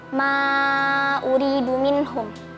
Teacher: Hukumnya mad jaiz munfasil. Karena ada huruf mad alif bertemu [musik] dengan hamzah di lain kata dibaca panjang empat atau lima harakat.